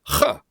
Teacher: we have the fricative CH, what we call broad CH, because the A is dictating to that CH.